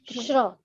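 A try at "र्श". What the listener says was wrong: Risha. The refa is before the sha. So sparsha. You've heard of sparsha?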